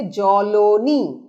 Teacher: বিষমী ভবনের ফলে দন্তন্য ধ্বনি ল ধ্বনিতে পরিণত হচ্ছে